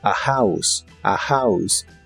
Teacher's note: recuerda pronunciar la H de House como una J suave